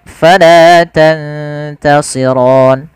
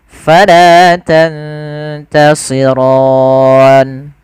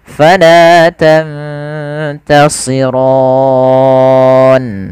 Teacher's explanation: Panjangnya adalah 2 harokat, atau boleh kita panjangkan 4 harokat, atau boleh 6 harokat. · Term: mad arid lis sukun